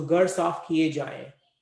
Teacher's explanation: it will be ending with the nasalized sound, because you are talking about multiple houses.